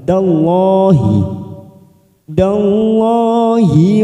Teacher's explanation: karena didahului fathah kita baca tebal